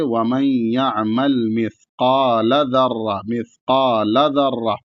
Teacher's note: بڑا قاف ہے اس کے ساتھ الف ہے اور لام کو نہیں کھینچیں گے